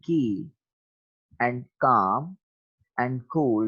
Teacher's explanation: जो कील है वो फ्रंट ऑफ द माउथ है, काम जो है वो सेंटर ऑफ द माउथ है, और कूल जो है वो बैक ऑफ द माउथ पर